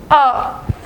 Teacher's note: जिनका उच्चारण करते समय हम जीभ का मध्य वाला यानी बीच वाला भाग प्रयोग करते हैं, और वो कहलाते हैं मध्य स्वर। जैसे जब आप अ का उच्चारण करते हैं तो ये जो आपकी जीभ है ये दांतों के बीच में बैठ के थोड़ा बीच में से यहाँ से थोड़ा सा चौड़ती है और तब इसका उच्चारण करते हैं।